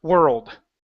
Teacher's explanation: you don't want to pronounce an O the O is incorrect it's ER world